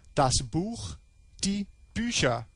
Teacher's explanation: So we have a noun, das Buch, the book, das, which is a neuter singular, changes to a plural definite article, die, and we have an ER ending, plus we have a change in the quality of the stem vowel. So it goes from a U to a U umlaut, das Buch, die Bücher. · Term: stem vowel change